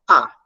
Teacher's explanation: O A não se move nem para frente, nem para trás, e faz uma posição medial. Ela fica na posição central da boca.